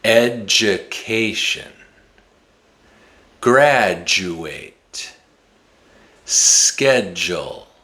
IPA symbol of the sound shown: dʒ